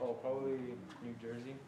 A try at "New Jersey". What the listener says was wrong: New Jersey. Well, it's called New Jersey, not New Jersey. If you have New Jersey, you don't pronounce the R. New Jersey. New Jersey.